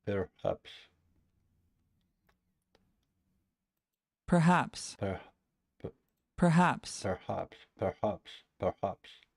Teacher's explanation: P and E and R, it's unstressed syllable, and haps is stressed syllable.